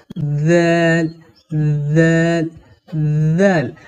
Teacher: জাল হরফের মাখরাজ হলো জিহুবার আগা এবং উপরের দুই দাঁতের আগা একসঙ্গে লাগিয়ে নরম করে পড়তে হয়